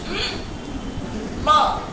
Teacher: थोड़ा सा 43 पर आओ, तुम्हें उसमें एम दिख रहा है, बाइलेबियल नेजल, नाक से बोला जाता है, करते ना अपन, माँ वो नाक से निकला है, एम नेजल साउंड है, समझ में आया।